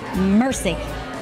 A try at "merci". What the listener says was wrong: It's not mercy. Oh. It's more like merci.